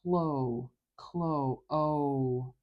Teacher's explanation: the tip of our tongue is touching right behind our front teeth like in behind incizors and it's making contact behind our teeth · our teeth so it's actually touching behind our top teeth and the air flow can move smoothly around the sides so it escapes around the sides of our tongue out of our mouth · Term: l sound